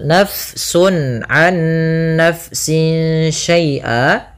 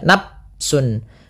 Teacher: Kemudian pada lafal nafsun an nafsin syai'a, di sini fa-nya dialirkan karena fa memiliki salah satu sifat yaitu sifat hamas, yang dimana dia jaroyanun nafas, harus mengalir nafas kita di dalam melafalkannya